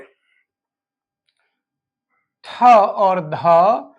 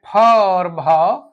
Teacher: ये वर्ण होते हैं महाप्राण होते हैं जिनमें अधिक वायु निकले